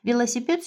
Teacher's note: velosiped sözündə məsələn D hərfi bizdə zvonki, cingiltilidir, amma bizdə kar deyir